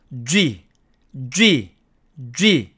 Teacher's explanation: 혀 모양을 우리가 앞에서 배운 드를 발음할 때처럼 위쪽 앞니의 치경에 갖다 댄 상태에서 목소리를 내면서 쥐와 같이 한 번에 발음을 합니다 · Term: 유성음